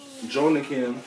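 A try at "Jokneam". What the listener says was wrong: Jokiam. I'm assuming that N is silent. Jokiam.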